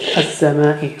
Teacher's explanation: Okay, there's nothing on lam, so it is not read, just direct.